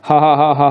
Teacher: जब आप ह बोलते हैं ना तो ह कहीं किसी के साथ कोई स्पर्श नहीं होता है, तो ये नाम, ये ज़्यादातर इसको स्वर यंत्र के रूप में जाना जाता है। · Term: काकल्य ध्वनि